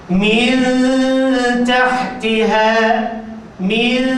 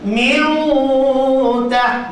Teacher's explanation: Min tahtiha, min, dengungnya nipis.